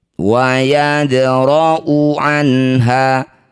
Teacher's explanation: dal sukun di tengah bacaan disebut qalqalah sughra, pantulkan dalnya kecil saja. Wa yadra'u anha, ada dhammah diikuti wawuh tapi wawuhnya tidak ada sukun, maka wawuh ini kita abaikan, dibaca pendek.